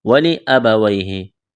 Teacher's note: یا ساکن سے پہلے زبر، یا لین بغیر کھینچ کے پڑھنا ہے